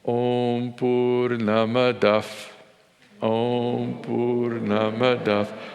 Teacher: There's no F consonant in Sanskrit, but in this context, that Visarga, the 2 dots in the Devanagari, like colon, or the H with the dot underneath it, is pronounced as if it were an F